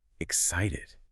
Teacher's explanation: they really emphasize the stress on that second syllable